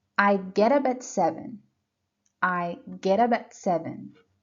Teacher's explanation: get up and at are linked so that's what we call linking we link the words so that they sound like one word